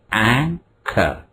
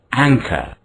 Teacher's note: The final R in the word is not pronounced. The first syllable which is stressed is ang. It's rather long. Ang. Ang. The second syllable is short. Cur is short.